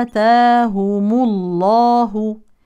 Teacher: عند الوصل تفخم لام اسم الجلاله لانها مسبوقه بضم